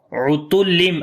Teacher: ain we read from the middle of the throat